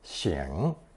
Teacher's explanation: For today's third new character, we have the hand radical chòu combined with bi to express the idea of blowing or wiping one's nose, pronounced third tone